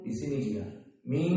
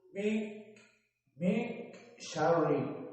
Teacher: Berpindah makhrajnya dari makhraj al-lisan kepada makhraj al-khaysum. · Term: trans makhraj